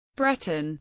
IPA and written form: ˈbrɛtən (Breton)